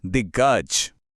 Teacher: क अपने अपने ही तीसरे यानी ग में बदल गया और बन गया दिग्गज